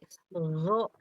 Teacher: Dia di tenggorokan atas, tapi ketika dilafalkan pangkal lidahnya naik jadi isti'la, sehingga gho sama kho dia termasuk huruf tebal.